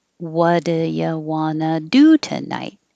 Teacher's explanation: and it'll end on night coming down because it's a wh question